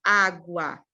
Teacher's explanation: Veja, não é um dígrafo. Eu pronuncio o U, por isso é um ditongo. E é um ditongo crescente, porque o U vai ser minha semivogal e o A vai ser a vogal.